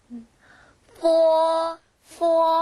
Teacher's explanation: 영어의 F 발음을 발음한다 라고 생각하시면 돼요. 윗니가 아랫입술을 살짝 깨물었다가 여러분 놓으시면서 발음을 하시면 됩니다.